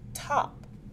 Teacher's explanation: the tongue is placed directly behind the top row of the teeth it is a stop sound and is voiceless the vocal cords do not vibrate